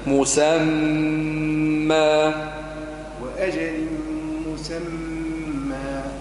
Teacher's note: مسمى مكن الغنة فك الميم المشدة